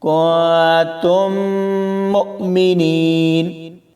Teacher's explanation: دونوں میم کو ملا کر غنہ ہوگا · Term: ادغام شفوی